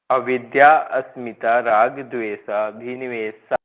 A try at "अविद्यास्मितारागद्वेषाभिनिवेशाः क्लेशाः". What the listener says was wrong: अविद्या अस्मिता नहीं बोलना, अविद्यास, आ के बाद अविद्या, फिर सीधा स आएगा।